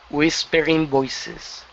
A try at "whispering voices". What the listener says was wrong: Okay, give me a good R there instead of whispering. Whispering.